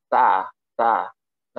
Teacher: Itu ah bibir itu teh sedikit meringis gitu tah tah tah lidah itu berada di Pangkal seri atas jadi nempel